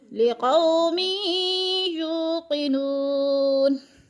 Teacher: यू को लंबा करेंगे इसलिए कि वो मद्दा है, यानी एक अलिफ के बराबर खींच कर पढ़ना है।